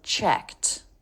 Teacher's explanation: the Ed is pronounced as a t when it comes after an unvoiced consonant in this case case we have the K so checked but